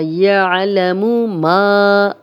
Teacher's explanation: الف مدہ، خالی الف، پیچھے میم پہ زبر، دو حرکات لمبا کریں گے